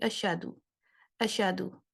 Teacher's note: ایک تو شین کو میں نے باؤنس کیا، دوسرا ہا کو ٹھیک طرح سے ادا نہیں کیا